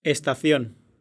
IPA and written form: es.t̪aˈθjõn (Estación)